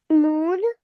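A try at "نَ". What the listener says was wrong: नून जबर है ना, नून नहीं बोलना, जबर के साथ पढ़ना है ना।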